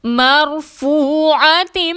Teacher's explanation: را ساکن سے پہلے میم پر زبر ہے، را کو موٹا پڑھیں گے، واو ساکن سے پہلے فا پر پیش ہے، واو مدہ ہے، 2 حرکت کے برابر کھینچ کر پڑھیں گے